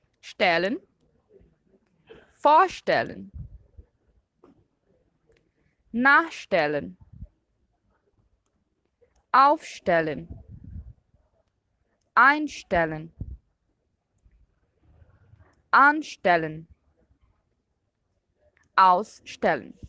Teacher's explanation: com os verbos separáveis, a sílaba tônica fica no prefixo. Então, eu vou ler de novo esses verbos e vocês vão perceber que a sílaba forte é a primeira sílaba, é esse prefixo, isso que vem antes do verbo.